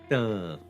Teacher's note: the T sound is made by your tongue touching the teeth, and then there's a sound that's made by the air moving first across the vocal cords and then out the mouth.